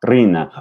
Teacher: Okay, signorina does not have a trilled R. R between vowels are not trilled, just like in Spanish.